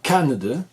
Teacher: La deuxième et la troisième syllabe ne sont pas accentuées. Vous avez donc un son que vous connaissez comme étant le schwa, c'est-à-dire le son le plus courant de la langue anglaise, c'est-à-dire ce son vocalique non accentué.